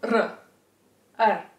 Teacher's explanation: It’s a vibration, a stream of airflow coming out over the tip of your tongue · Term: alveolar trill